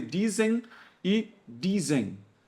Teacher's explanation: Tudo a gente nasaliza, não tem diferença entre m e n